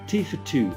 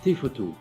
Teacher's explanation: the alveolar articulation of t in English was one of those deceptively similar things when I compare English to Spanish pronunciation, because Spanish would use a dental t